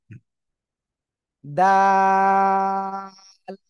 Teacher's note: দুই দাঁতের আগার সঙ্গে লাগাবেন না গোড়ায় লাগাবেন কোথায় গোড়ায় লাগান জিহ্বার আগা সামনের উপরে দুই দাঁতের গোড়া